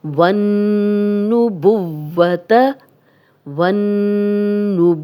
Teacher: नून पे जब भी शद है तो आपको पता है कि गुन्ना किया जाता है। गुन्ना नाक में थोड़ी देर आवाज़ के ठहराने को कहते हैं।